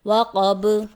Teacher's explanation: با کی آواز حالت وقف میں پلٹ کر واپس آئے گی